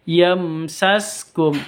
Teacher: nun sukun bertemu dengan Ya masuk disertai dengan dengung · mim sukun bertemu dengan sin, jelas bacanya karena idhar safawi.